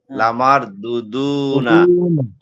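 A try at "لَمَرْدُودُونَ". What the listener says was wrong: মাশাআল্লাহ, দুইটা এই বানান করার সময় ঠিক আছে, পরে আবার একটা টান একটু কম হয়ে গেছে। আবার লামার, লামার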